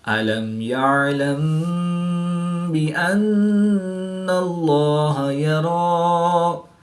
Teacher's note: میم ساکن کے بعد حرف با اور میم کے علاوہ حرف یا ہے تو یہاں پر اظہار شفوی ہوگا، یعنی غنہ نہیں کریں گے بلکہ میم ساکن کو ظاہر کر کے پڑھیں گے